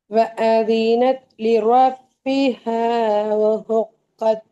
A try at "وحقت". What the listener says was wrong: وحقت என்ற அந்த ஹா நான் படிச்சு கொண்டிருக்கிறேன் சின்ன ஹா. அப்ப அது கொஞ்சம் மாறணும்.